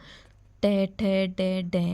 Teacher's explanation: दांतों के और तालू के बीच में हमारी जो जीभ होती है वो टच वहाँ करती है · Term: मुदरने